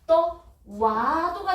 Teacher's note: 오와 아가 만나서 와가 됐어요. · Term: 반모음화